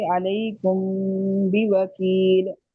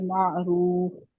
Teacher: हमने मीम की आवाज को थोड़ा छुपाया है और हमने आगे अदा किया है, इक्फा किया है। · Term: इक्फाए शफवी